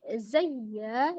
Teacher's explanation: Kemudian ya tasdid zayya, di situ ada hukum nabar ya, ditinggikan, ditekan suaranya tapi tidak ditahan.